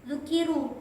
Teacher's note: ro-nya itu dibaca tafhim lalu dibaca panjang dinamakan matobi'i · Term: ro tafhim